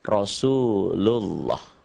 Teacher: lafaz Allah ini dibaca tebal, berbunyi O, karena sebelumnya ada yang merah.